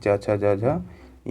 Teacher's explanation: च छ ज झ इया जो होते हैं उन सभी का उच्चारण तालु से किया जाता है